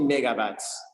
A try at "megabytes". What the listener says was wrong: He sounds like he's saying bats, maybe? So this is a diphthong. So what he needs, again, desperately is to continue the energy of his voice so that he can go from the beginning to the end of this sound, because diphthongs have two positions.